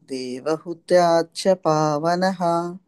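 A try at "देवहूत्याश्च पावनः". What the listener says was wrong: మాతాజీ ఇక్కడ దీర్ఘం ఉంది. దేవహూత్యాచ్చ పావనః.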